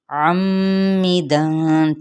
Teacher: या आइन की ज़बर को मीम के साथ गुन्ना करते हुए अम्मिदन, ठीक है, मीम मुशद्दद पे गुन्ना किया जाता है